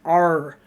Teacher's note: When I say R, it is like the whole inside of my mouth, kind of almost nasally up into my nose, being like R, like a pirate.